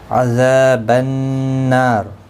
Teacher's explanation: ذا الف مدہ ہے نا الف مدہ ہے دونوں کو ایک الف کی مقدار کے برابر کھینچ کر پڑھیں گے